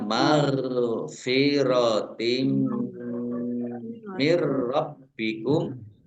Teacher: Kasrah tanwin bertemu dengan huruf mim, bacaan idgham bi gunnah masuk dengan mendengung, yaitu mendengung mim ditandai mimnya ada tasdidnya. · Maghfiratin ghain sukun bukan kolkolah ya. Jangan dipantulkan, jangan dibaca mar, tapi dibacanya maghfiratin mir rabbikum.